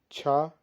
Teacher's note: छा महाप्राण है लेकिन घोष नहीं है